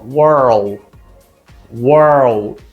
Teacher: eu vou juntar esse meu R com esse finalzinho do L, ó. World, world.